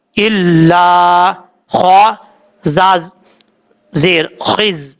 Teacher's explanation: لام کے آگے الف ہے، ایک الف کی مقدار لمبا کر کے پڑھیں گے